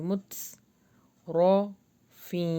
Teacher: تا کے اوپر جزم ہے تو ہلکی سی ہمس آئے گی